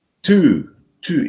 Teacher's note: this long very expressive ooh sound